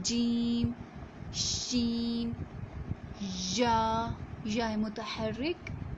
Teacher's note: زبان کا درمیان جو ہے اور اوپر جو تالو ہے اس کے ملنے سے ملاپ سے ادا ہوتے ہیں جیم، شین اور یا متحرک